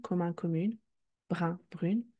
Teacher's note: As seen in a previous video, the denasalization happened because by adding a E, we are adding a new syllable and hence splitting the nasal vowel